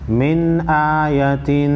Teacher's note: میم نون زیر من، حمزہ کڑا زبر آیا زبر یا، من آیا، تا دو زیر تین، من آیتن، اظہار ہوگا، نون ساکن کے بعد حروف خلقی میں سے حمزہ ہے